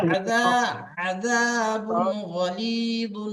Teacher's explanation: আপনার হারাকাত গুলো টান হয়ে যাচ্ছে, আর আইনটা আপনি বার করছেন একেবারে মানে গলার শেষ অংশ থেকে, গলার শুরু অংশ থেকে আইন মানে গলার মাঝখান থেকে আইনটা বের করেন